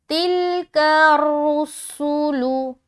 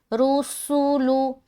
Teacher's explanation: सू, सीन पेश सू, लाम पेश लू। सीन को सीटी की तरह जाहिर करना है क्योंकि इसके अंदर हर्फ सिफत सफ़ीर पाया जाता है।